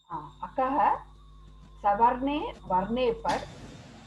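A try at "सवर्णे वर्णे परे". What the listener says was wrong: Not par. Savarne Varne pare.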